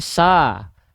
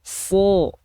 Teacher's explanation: Kalau dia termasuk ke dalam huruf yang tebal ketika fathah bunyinya tidak akan condong ke vokal A. Tapi bunyinya akan condong ke vokal O. · Ketika dia berharokat fathah, dia kan nggak dibaca sa, tapi dia dibaca so. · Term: huruf sod